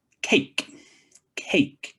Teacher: a is actually a diphthong kind of like a double vowel so it's the E and the E together makes a so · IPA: /eɪ/